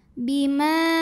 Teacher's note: Maka mimnya dipanjangkan boleh 4 boleh 5 harokat. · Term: mad jaiz munfasil